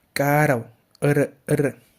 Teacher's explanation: solo la vibración de la R solo se presenta una vez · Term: vibrante simple